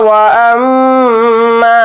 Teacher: یہاں پر میم کے اوپر تشدید ہے تو اس کے اندر غنہ کریں گے